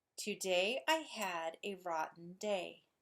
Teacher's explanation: unstressed stressed unstressed stressed